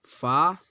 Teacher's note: اوپر کے دانتوں کا کنارہ نیچے کے ہونٹ سے مل کر فا ادا ہوتا ہے۔